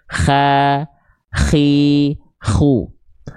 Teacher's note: ada bunyi seperti keresek-keresek dengkurannya